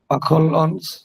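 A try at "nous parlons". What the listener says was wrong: আচ্ছা, দুইটা বিষয়, একটা হচ্ছে নু পাক ল, এসটা লাগবে না বলা, নু পাক, এক্স্যাক্টলি। আর হ্যাঁ, পাক লন পুরোটা না বললে লং, একটু নাকের মধ্যে দিয়ে লং, এক্স্যাক্টলি।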